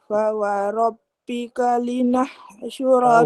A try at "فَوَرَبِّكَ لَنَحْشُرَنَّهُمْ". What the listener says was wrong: Fawarabbika lanah, lam beri atas.